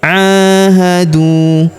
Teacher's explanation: Huruf du kita panjangkan dua harakat karena wau sukun di depannya alifnya tidak dibaca